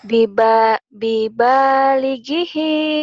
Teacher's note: I-nya pendek, Neng. Yang panjang hi-nya doang.